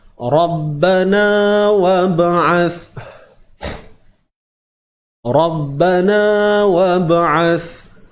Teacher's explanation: huruf ro ini dibaca dengan tebal